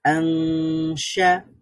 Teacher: তাহলে এখানে নুনের সাউন্ডটা আরো দীর্ঘায়িত হবে এবং এখানে একটা গুন্না তৈরি হবে, নাকের মধ্য থেকে আওয়াজটা ক্রিয়েট হবে। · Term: ইকফার গুন্না